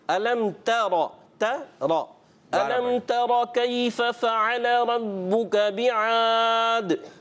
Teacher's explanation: دیکھیں میں نے ایک چیز عرض کی تھی کہ را پور کرنے کے پور تو کرنا ہے، تا پور نہیں ہونا چاہیے، تو تا باریک رکھیں گے